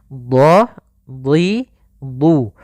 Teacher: dhad huruf isti'la dan huruf itbaq yang tebal dan juga pangkal lidah terangkat